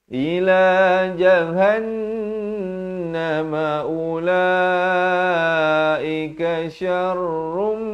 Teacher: Masuk beserta dengung. Daripada syarrun jadi syarrum. Tapi jangan lupa dengungkan dua harakat.